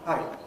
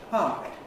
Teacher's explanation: Glottal stop at the end in Japanese. Japanese short vowel gets a glottal stop after it. English doesn't.